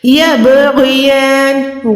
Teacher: غین موٹا ہے، یا کھڑی زبر کو لمبا کریں، نون زیر پہ رک رہے ہیں تو یہاں پر ساکن ہو جائے گی.